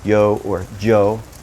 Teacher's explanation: In some areas, they may pronounce it more like a soft J